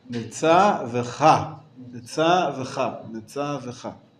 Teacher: No, not mitzavecha, mitzav-cha. The emphasis remains on the cha.